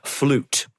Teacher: it's a long oo, there's no additional semi vowel y at the beginning of it